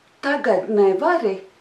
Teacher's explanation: And the rhythm is yes, no, yes, no, no.